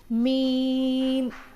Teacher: मीम बंद होठों के खुश्क हिस्से से